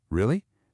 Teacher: You can ask a question really just by raising the pitch or you can shout it really by adding stress and loudness.